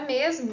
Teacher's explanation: Então, justamente aqui no exemplo da palavra mosca, né, nós temos aqui a transcrição de S, porque ele está próximo de um outro elemento que também é marcado como menos sonoro. E na palavra mesmo, nós vemos aqui a transcrição do Z, né, de Z, aqui ele vai ocorrer com uma forma mais sonora, porque ele está próximo do fonema M, né, que apresenta esse traço mais para a sonoridade.